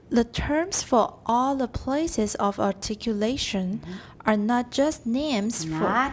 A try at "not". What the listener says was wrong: It's not nut. You didn't say nut, but it was getting close. Remember what I just said, that not is very, very important. Slow down, stress it.